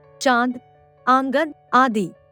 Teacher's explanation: अनुनासिक इसका उच्चारण नाक और गले दोनों से होता है